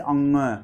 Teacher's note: तो यहाँ आप अगर तीसरे वाले को देखें तो आपसे कहा जा रहा है कि अनुनासिक के उच्चारण के दौरान, यानी जो नाक की सहायता से ध्वनियाँ निकलती हैं उसके उच्चारण के दौरान नाक से बहुत कम सांस और मुंह से ज़्यादा निकलती है